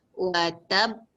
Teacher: Say it sound for 2 beats with the same breath, baru lepaskan echo. Dia mesti kena tahan, lepas tu lepas. Pasal dia sabdu.